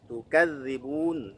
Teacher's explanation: Rokhawah, dia mengalir bunyinya, tapi tidak mengalir napasnya. Ya. Kalau tidak mengalir napas berarti masuk kelompok huruf jahar.